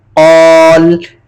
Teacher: इसकी किस तरह होगी, कौफ अलिफ जबर कौ, लाम जबर ला, कौला, वकफ में कौल, 3 अलिफ की मिकदार खींच के पढ़ेंगे, लाम को साकिन कर देंगे, कौल, आखिर में लाम की भी अदायगी होगी, कौल।